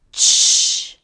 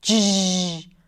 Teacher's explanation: Ch, affricate, stop and then a fricative, voiceless, j, voiced.